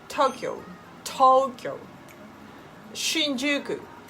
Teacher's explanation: you need to make a same pitch on all letters